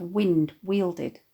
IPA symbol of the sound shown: w